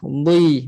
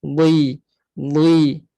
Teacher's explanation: Yang tebalkan bunyi bukan sebab muncung. Sebab dalam lidah kita tu naik. Pangkal dan tengah lidah. Bui. Boleh je muncung.